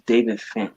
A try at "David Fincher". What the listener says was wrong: David Fincher? Fincher, not David Finch. David Fincher.